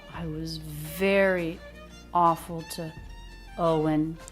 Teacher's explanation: Ver and O get the most stress. Awful gets some too.